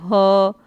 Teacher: स्वर यंत्री, स्वर यंत्र के मूल से ह आ, स्वर यंत्र के मूल से यानी हमारा कंठ है, जहाँ से काकल पे इसको कहते हैं, जहाँ से कंठ का शुरुआत होता है, ठीक, वहीं से ह और ये जो आ है इसका उच्चारण होता है।